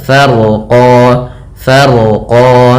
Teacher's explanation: rnya dibaca dengan tebal karena huruf ro yang dia sukun sebelumnya fathah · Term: Ronya tebal